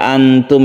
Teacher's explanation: membacanya itu kita samar-samar antara izhar dan idgham jadi tidak terlalu jelas dan tidak dimasukkan ke hurufnya tapi cuma ancang-ancang kita menyiapkan diri untuk membaca huruf berikutnya seperti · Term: Ikhfa Hakiki